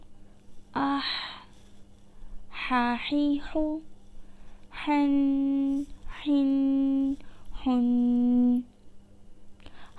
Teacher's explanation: ہا حلق کے درمیانی حصے سے ادا ہوگا اور ہا حلق کے نیچے والے حصے سے ادا ہوگا۔